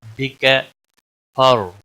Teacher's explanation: را کو ہلانا نہیں، را کو موٹا بھی پڑھا جائے گا، را ساکن سے پہلے زبر ہے اس لیے موٹا پڑھا جائے گا